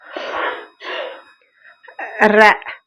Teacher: நாவின் நுனி மேலண்ணத்தின் முதல் பகுதியை தொட்டு வருவதால் ரகரம் தோன்றுது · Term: இடையநரகரம்